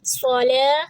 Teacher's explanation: صاد کو موٹا پڑھیں گے، لام کو 2 حرکہ، تا 1 حرکہ